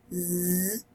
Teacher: si hace un sonido como el zumbido de una abeja, zzz, allí hay una vibración